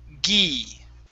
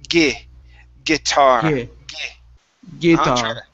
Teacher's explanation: Instead of gi, you drop your tongue just a little bit. Instead of an E sound, it's an I sound.